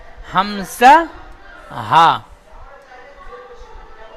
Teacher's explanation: এক নাম্বার মাখরাজ, হালাক বা কণ্ঠনালীর শুরু হতে উচ্চারিত হয় হামজা হা।